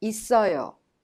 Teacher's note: The final consonant double S in it of 있어요 is prolonged and connected to the next syllable 어 and becomes 있어요.